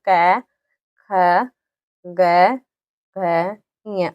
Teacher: तो यहाँ पे जो कै वर्ग के जो होते हैं इनका उच्चारण स्थान होता है कंठ। कि ये जो बोले जाते हैं इनको बोल के देखना, कंठ है, कंठ से ये बोले जाते हैं।